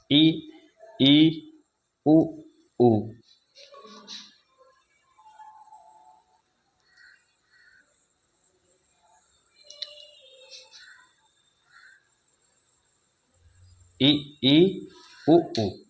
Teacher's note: ऐसे स्वर जिनके उच्चारण में मुख द्वार लगभग बंद रहता है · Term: सम्रत